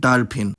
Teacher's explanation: [pʰ] is often substituted for [f] in more recent loanwords, as there’s no [f] in Telugu